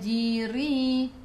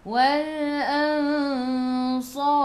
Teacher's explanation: jadi ikhfa hakiki dengan 2 harakat bawa ke sisi huruf sad.